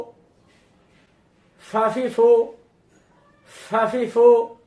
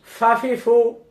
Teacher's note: ফা পেশ ফু, ফা জবর ফা, ফা জের ফি, ফা পেশ ফু, ফাফিফু, ফাফিফু। নিচের ঠোঁটের পেটে উপরের দাঁতের আগা দিয়ে চাপ দিয়ে বাতাস দিতে হবে